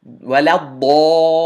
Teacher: The very last word of Surah Al-Fatiha, ضَالِّينَ, has a 6 count mad on it. And that 6 count mad is called maddul lazim, and it occurs because of a shadda.